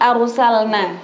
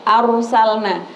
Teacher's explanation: Di situ ada id arsalna sama rnya dibaca tebal.